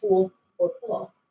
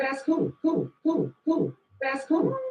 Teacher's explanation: So that's an L turning into a vowel in a word like cool or full. Might sound something like cool or cool. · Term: L vocalization